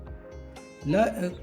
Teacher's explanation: पार्श्व का अर्थ है बगल, अर्थात ल व्यंजन के उच्चारण के समय जीभ के दोनों तरफ से वायु बाहर निकलती है और ल का उच्चारण होता है। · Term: पार्श्विक व्यंजन